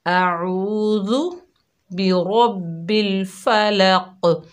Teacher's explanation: قاف میں کلکلہ کریں گے، را کو موٹا پڑھیں گے، ذال کو نرمی سے ادا کریں گے